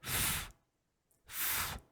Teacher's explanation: So f is voiceless, so you can't really hear. You can still hear it, but it's not very powerful. Like f, very soft, like whispering, right?